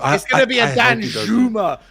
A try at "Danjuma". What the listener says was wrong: If you're gonna pronounce it right. It's not Danjuma, it's Danjuma. you don't pronounce the J in Dutch.